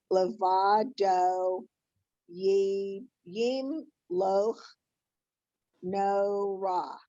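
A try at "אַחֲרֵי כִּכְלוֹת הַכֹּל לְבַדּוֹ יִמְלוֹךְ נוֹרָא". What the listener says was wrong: Beautiful.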